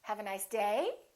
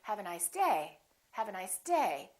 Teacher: I'm still going to emphasize the word day but I'm not going to make my pitch go up